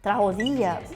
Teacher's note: So as you see, the intonation is on I.